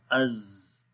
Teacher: استفال باریک پڑھیں گے، انفتاح اسمات اور صفیر بھی آ جائے گی، سیٹی کی آواز